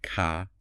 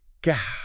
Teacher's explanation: They're made in the exact same part of your mouth with the exact same tongue shape. K is unvoiced, G is voiced.